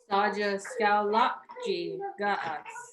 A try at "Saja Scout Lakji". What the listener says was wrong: Okay, pretty good.